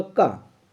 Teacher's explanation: का हमारे पास अल्प प्राण है, अर्थात यह महाप्राण ध्वनि नहीं है।